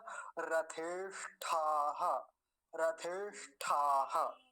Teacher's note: होता है ट नहीं बोलना है ट अल्प प्राण होता है ठक महाप्राण होता है ज्यादा वायु चाहिए होती है ठोकर जैसी लगती है भीतर से